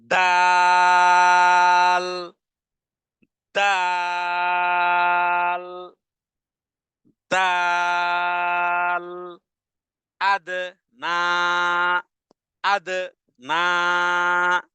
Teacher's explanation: দালের উচ্চারণ হবে জিহ্বার আগা সামনের দুই দাঁতের গোড়ার সাথে লাগিয়ে দিয়ে উচ্চারণে আওয়াজকে কঠিন করে এবং উচ্চারণে ধাক্কা দিয়ে এভাবে বলতে হবে দাল দাল দাল আদনা